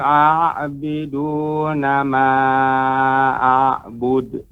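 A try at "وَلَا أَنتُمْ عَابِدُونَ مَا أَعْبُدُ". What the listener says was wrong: Pengucapan abidun tadi terdengar a jadinya. Nah, tapi pengucapan a fathah a. Wala antum abiduna ma a'bud.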